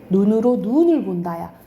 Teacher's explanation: 내리는 눈을 길게 발음해요